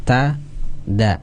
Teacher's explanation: menempelnya tempelan yang kuat pada pangkal gigi seri pangkal gigi seri atas · samakan dengan huruf ta makhrajnya yang ta ya, dengan dal satu makhraj ya